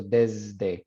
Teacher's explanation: yeah. So desde, if the S comes before a voice consonant, it becomes voice. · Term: z sound